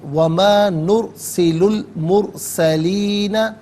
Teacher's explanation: نرسلو میں لام پر پیش ہے، اسے المرسلین کے لام ساکن کے ساتھ ملائیں گے، درمیان میں سے الف یعنی حمزہ کو حذف کریں گے۔